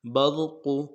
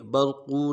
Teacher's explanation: یکاد البرق، برق، لفظ برق میں جو را کو موٹا کریں گے، برق، قاف کو موٹا کریں گے، برق، قاف کو کھینچا نہیں ہے، برقو نہیں پڑھنا ہے، برق، ہونوں گول کریں گے، پیش کو ادا کرتے ہوئے، زبر زیر پیش کو بالکل نہیں کھینچیں گے۔